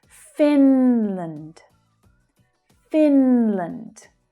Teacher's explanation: The first syllable is stressed and the second syllable is unstressed so that vowel sound reduces down.